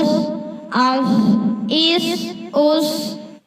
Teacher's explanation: صاد ہمیشہ پر یعنی موٹا پڑھا جاتا ہے